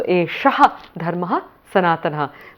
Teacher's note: Esha dharmaha will actually get a visarga there.